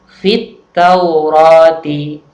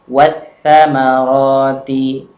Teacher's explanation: Jadi lamnya seolah-olah tidak dibaca, tapi langsung masuk pada huruf ta. Sama juga ketika bertemu dengan tha, tidak dibaca wal samarati, tapi membacanya adalah wat samarati. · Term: alif lam asyamsiyah